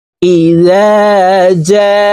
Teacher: তো আমরা এই জিম হরফকে 4 আলিফ টেনে পড়ব।